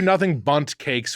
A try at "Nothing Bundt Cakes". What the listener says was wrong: I think you said gun, the G.